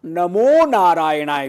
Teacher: ऐसे कई जगह विसर्ग का ओ बन जाता है